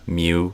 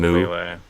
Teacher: a hidden Y sound in communication. So mu instead of moo.